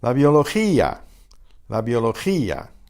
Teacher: Notice the accent on the I in gia separates those two vowels into two separate syllables.